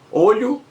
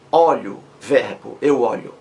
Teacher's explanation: Olho, substantivo, fechado. Olho, verbo, eu olho, aberto.